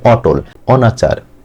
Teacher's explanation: অ টা অর মতই থাকবে অন্য কোন উচ্চারণ আসবে না বা ওর মত হবে না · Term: বিবৃত